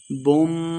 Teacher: میم مشدد ہے غنہ کر کے پڑھیں گے